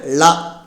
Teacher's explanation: நாவின் இரு பக்கங்கள் தடித்து மேலண்ணத்தின் நடுப்பகுதியை தொடுவதால் தோன்றும் எழுத்து